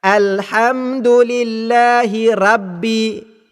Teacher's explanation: Baiklah, kesalahan yang ketara juga yang berlaku dalam ayat yang kedua, iaitu apabila pembaca Al-Fatihah membaca huruf Ra yang berbaris di atas dengan bacaan tarqiq ataupun nipis pada kalimah Rabbi. Bunyi bacaan yang salah tersebut ialah Alhamdulillahi Rabbi.